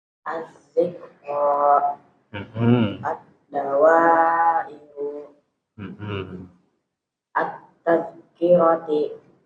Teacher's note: Ya, kalau alif lam qamariyah jelas berbunyi al, sedangkan alif lam syamsiyah tidak berbunyi al ya. Artinya alif lamnya itu dia idgham ke huruf setelahnya secara sempurna